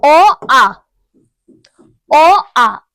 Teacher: এখানে দেখো অ আ, অ আ দেখো এখান থেকে আসছে, কণ্ঠ থেকে আসছে, কণ্ঠের সাহায্যে উচ্চারণ হচ্ছে, তাই না? তো তাহলে বোঝাই যাচ্ছে এটা কণ্ঠধ্বনি।